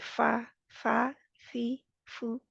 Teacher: ऊपर वाले दो दांत नीचे बड़ी नर्मी के साथ मिलेंगे के हवा को बाहर निकलने की जगह मिलेगी है ना हवा आसानी से बाहर निकल आएगी